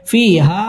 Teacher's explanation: মুনফাসিল তিন আলিফ টেনে পড়তে হবে